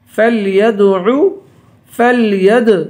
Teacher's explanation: فلید دال پہ قلقلہ ہوگا